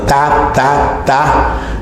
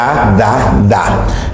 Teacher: Digo ta, ta, ta. Entonces el ápice de la lengua se va a la parte superior de los dientes, de ahí que se llame dental. Y lo mismo sucede con D, da, da, da. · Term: sonidos dentales